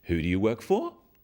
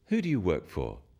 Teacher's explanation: use a falling tone it sounds friendlier